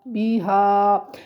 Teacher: یہ جو کھڑی زبر ہوتی ہے اسے ایک الف کے برابر لمبا کر کے پڑھا جاتا ہے